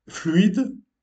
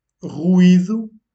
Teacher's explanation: diphtongue dans le mot fluide et hiatus dans le mot ruido